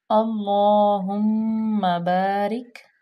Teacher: لام جو ہے وہ مشدد ہے، لام پہ کھڑے زبر بھی ہے اور اس کو تھوڑا سا لمبا بھی کریں گے۔